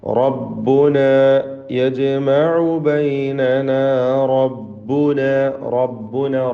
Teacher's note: റായിന് തഫ്ഖീം കൊടുക്കുക, പൂർണ്ണമായ നിലക്ക് തടിപ്പിച്ചുച്ചരിക്കുക.